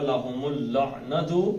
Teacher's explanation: میم سیدھا لام میں چلا جائے گا